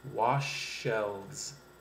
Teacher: The SH sound at the end of wash and the SH sound at the beginning of shelves, you can blend those two sounds together for a more effective way of speaking. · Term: same consonant blends